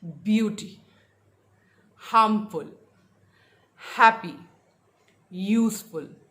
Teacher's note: The stress was on the first syllable